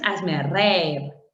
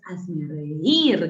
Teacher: con acento en la I, en la débil, en la cerrada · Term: hiato acentual